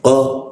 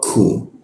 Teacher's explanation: Kalau qo tidak ada hembusan udaranya. Kalau ku ada hembusan udaranya.